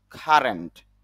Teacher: কারণ সি এর উচ্চারণ যদি ক হয় এবং শব্দের শুরুতে আসে, তখন তা মুখ থেকে একটু অতিরিক্ত বাতাস বের হয়, তখন ক না হয়ে উচ্চারণটা হয়ে যায় খ।